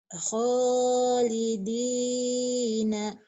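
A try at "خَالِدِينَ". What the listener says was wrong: Kh-nya kurang kotor. Khalidina. Khalidina.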